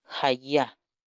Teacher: Se trata de una sola vocal, una A muy larga